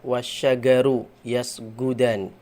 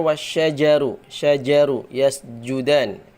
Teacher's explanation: Atau orang kita orang Indonesia membaca id jaa nasrullahi wal fath itu membaca idza jaa harusnya id jaa bukan id jaa idza jaa tapi idza jaa nasrullahi wal fath ya gitu jim-nya dibaca dibaca ya dengan ee ee keluar dari tengah lidah bukan dari ujung lidah